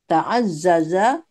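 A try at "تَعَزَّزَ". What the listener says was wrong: Hanya tidak panjang.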